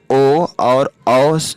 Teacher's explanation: जिन वर्णों का उच्चारण कंठ और ओठों के सम्मिलित प्रयास से होता है, उसे कंठोष्ठया वर्ण कहते हैं और इसके अंतर्गत ओ और औ जैसे स्वर जो है शामिल है।